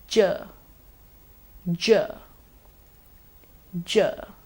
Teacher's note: it's a post alveolar sound or a palatal alveolar sound the blade of your tongue should move near the back of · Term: palato-alveolar sound